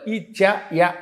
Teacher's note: అలాగే ఇచ్చు యశానాం తాలుహు, తాళవ్యంతో పలకాలి